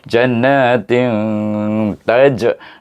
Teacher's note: ini bacaannya antara izhar dengan idam tetapi dia lebih cenderung kepada izhar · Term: ikhfa hakiki kubra